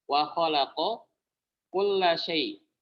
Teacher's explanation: Qafnya ini jahar, kafnya hams.